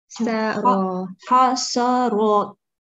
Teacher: So try not to round seen, but you need to round raw.